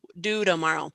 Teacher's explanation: So when the T falls between vowel sounds in American English, it softens to that flap sound, which we consider a D, which you may hear and say, that sounds like an R in my language.